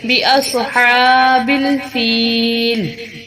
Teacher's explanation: ہا کو وسطی حلق سے نکالیں گے اور ہا کے اوپر کھڑی زبر ہے، اس کو لمبا کریں گے، بِأَصْحَابِ الْفِيلِ۔